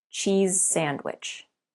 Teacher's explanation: at the end of cheese your tongue is behind your top teeth leave your tongue there and change to without moving anything then